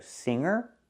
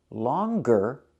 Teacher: singer there's no G longer there is the G sound